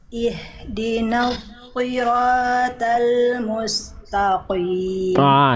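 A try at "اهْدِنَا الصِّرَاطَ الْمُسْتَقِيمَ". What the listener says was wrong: Shift shotnya bagus, taknya dilatih ya, tak ke bawah tebal terus taknya. Musta, kebiasaan. Di PR itu ya huruf tak.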